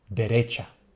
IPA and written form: deˈretʃa (derecha)